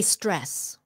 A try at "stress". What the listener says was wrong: Okay, start it with an S. Okay, so it's not dress. Don't forget the, yeah, stress.